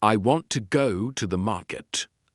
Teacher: The stress is on want. Go and market. If you say all words the same way, it will sound flat and not natural. · in the sentence, I want to go to the market, the stress is on want, go, and market.